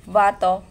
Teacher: V as a voice labiodental fricative